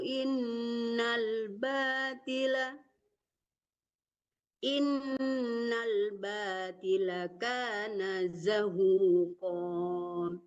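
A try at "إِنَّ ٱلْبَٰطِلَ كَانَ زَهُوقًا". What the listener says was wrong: Ya, kalau nggak sampai suara wazaqal batilu innal batil. Jangan batila ya, karena lamnya nggak panjang dimatikan ya.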